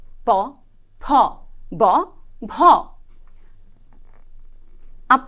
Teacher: প বর্গ হচ্ছে সবচাইতে স্পষ্ট স্পর্শ ধ্বনি কারণ আমরা দেখতে পাই আমাদের অষ্ঠ এবং অধর দুটো যখন একসঙ্গে মিলিত হয় এবং তারপরে উচ্চারিত হয় প